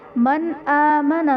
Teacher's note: نون ساکن کے بعد حروف حلقی میں سے حمزہ آ رہا ہے تو یہاں پر اظہار کا قاعدہ ہوگا یعنی نون ساکن میں غنہ کر کے نہیں پڑھنا